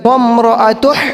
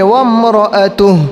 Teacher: آخر کے اندر ہا کی آواز آنی چاہیے، لیکن چھوٹی ہا کی آواز، بڑی ہا کی نہیں